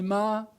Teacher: the S can completely disappear, such as in several South American pronunciations of Spanish, where they'll not say mas, they'll say ma, but a bit longer, so that people know there's an S which was originally there.